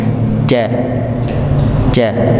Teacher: Ya, tengah lidah bertemu dengan langit, ja, bukan ja, bukan nggih. Ja, tidak ada ya hembusan nafasnya